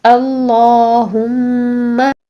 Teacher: اور اس کے بعد ہم کھڑی زبر کو 2 کاؤنٹس ادا کریں گے یعنی 2 سیکنڈ کے لیے لمبا کر کے پڑھیے. اس کے ساتھ ساتھ میم پر غنہ کیجئے، میم مشدد پر ہم غنہ کریں گے، ٹھیک ہے. اللہم، غنہ ہوتا ہے ناک میں گنگنی سی آواز کو ٹھہرانے کو ہم غنہ کہتے ہیں.